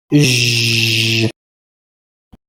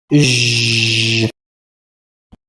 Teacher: This Arabic letter, Jim, is pronounced by touching the middle part of your tongue against the hard palate, which is the bony anterior portion of the roof of your mouth.